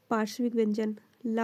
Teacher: पार्श्विक व्यंजन में हवा जो होती है बगल से निकल जाती है।